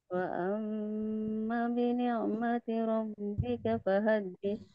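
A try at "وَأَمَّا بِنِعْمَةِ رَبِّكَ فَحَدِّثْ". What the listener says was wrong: Nah, wa ammanya kurang panjang. Wa amma 2 harakat. Madnya.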